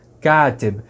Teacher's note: Perceba que agora a primeira vogal fica longa, K, e a segunda vogal vai ser um I.